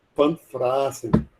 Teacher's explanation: o V é a mesma pronúncia do alemão, que é som de F